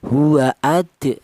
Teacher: Jadi cara bacanya huruf dal yang mati ini dipantulkan. Hua adah seperti itu ya dipantulkan ya. · Qalqalah itu artinya ada suara pantulan. Jadi cara bacanya huruf dal yang mati ini dipantulkan. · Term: qalqalah sughro